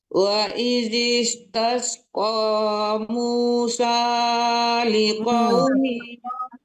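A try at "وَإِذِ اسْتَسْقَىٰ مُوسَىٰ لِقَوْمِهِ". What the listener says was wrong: Kepanjangan sanya 2 harkat aja, 2 ketokan aja ya. Yang huruf-huruf seperti itu ya, yang harkatnya seperti itu 2 harkat aja. Jangan terlalu lama.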